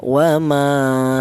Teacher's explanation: Dibaca matobi, alasannya ada alif yang di dalam huruf yang berharokat fathah. Panjangnya matobi 1 alif atau 2 harokat atau 2 ketukan